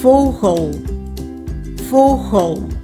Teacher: đây là từ nhấn ở âm tiết thứ nhất, cho nên chữ e ở âm tiết thứ hai nó cũng là stomme e